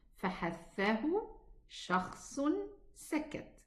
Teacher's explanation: The reason of Hams that the vocal cords are a little bit open, they are apart from each other. They don't vibrate, So they allow a lot of air to flow, and the sound is hidden.